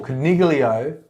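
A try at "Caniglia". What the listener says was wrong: It's actually the G is silent in Italian. It's Canelio. It's actually how you say rabbit in Italian.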